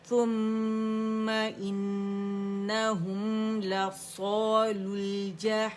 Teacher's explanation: اجتماع ساکنین ہو رہا ہے تو لل جہیم ہوگا